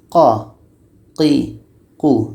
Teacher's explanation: lidah kita akan terasa terangkat qo dekat pangkal lidah kita itu qo kita rasakan lidah kita terangkat qo Qi qu qo · Qa ini letaknya pada pangkal lidah menempel dengan daging dekat tonsil kita.